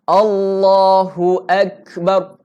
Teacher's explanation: Hu nah, bukan u. Elakkan u. Bunyikan hu.